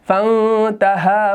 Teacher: فانتہا تو فا کو ہم نے نون کے ساتھ مرج کر دیا کیونکہ آگے یہاں پر تا آ رہا ہے، حروف اخفا میں سے ہے، تو یہاں پر نون ساکن ہے تو تا جب بعد میں آ جاتا ہے تو اخفا ہو جاتا ہے